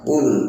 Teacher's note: Qul tidak boleh kita membaca qul, bukan qul tapi biasa qul dengan mengangkat lidah bagian belakang, kemudian makhraj dari qaf ialah di pangkal lidah.